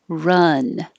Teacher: this is the uh vowel as in up so your tongue is very low in the middle